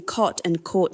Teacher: many American dialects have undergone the lot thought merger making cot and court sound identical while British English maintains this distinction clearly.